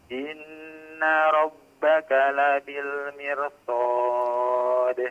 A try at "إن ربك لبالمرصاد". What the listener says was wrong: Mirsad. Ra-nya ditebalkan.